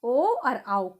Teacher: ओ और आओ, कंठ और ओंठ, इसमें आपके कंठ से आवाज निकल रही है और ओंठ आपस में मिल रहे हैं